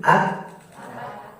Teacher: Diawali dengan syiddah dan diakhiri dengan hams. Diawali dengan tertahannya suara dan diakhiri dengan mengalirnya nafas. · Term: kaf